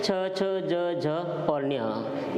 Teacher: इनका जो उच्चारण स्थान है वो क्या है, तालु है। इनको हम तालव्य वर्ण कहते हैं।